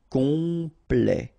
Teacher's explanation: Temps, and then complet, okay, here ET at the end will open it, open, sorry, the sound of the E, so E, okay, plet, complet, complet, and then OM is nasal here, just because you get your P after that, so it's on, complet.